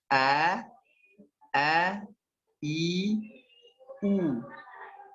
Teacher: Al-jauf ada rongga tenggorokan sampai rongga mulut. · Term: huruf rongga